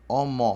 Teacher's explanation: Omó porque as duas vogais são abertas, tá? Tem um risquinho embaixo de cada uma das vogais, ó.